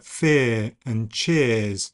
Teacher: They're often described as being a centering diphthong, but that's kind of smoothed now to fear and cheers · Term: long monophthong version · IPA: [ɪː]